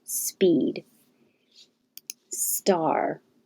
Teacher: you're already using air for the s speed so you'll have a little less air flow for the p to release